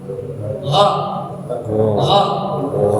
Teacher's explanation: Coba ghainnya jangan kayak G, mundur ke belakang Pak.